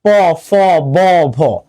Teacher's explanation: প বর্গীয় যদি তুমি উচ্চারণ করো দেখবা নিচের ঠোঁট উপরের ঠোঁটে লাগছে প ফ ব ভ, এই জন্য এগুলোকে বলা হয় ওষ্ঠ ব্যঞ্জন।